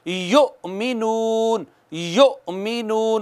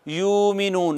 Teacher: जैसे युमिनून, युमिनून, उसको यूं नहीं पढ़ सकते यूमिनून, नहीं, या के बाद हमज़ा है, झटका मारना है, वहां पे झटका देना है, कहना है युमिनून।